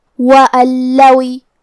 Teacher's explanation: ہمیں یہ نون کو لام میں ملا کے بغیر غنہ سے اور تشدید کے ساتھ یہ حکم کو ادا کرنا ہے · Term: ادغام بغیر غنہ